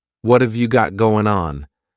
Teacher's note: what and have are going to be pushed together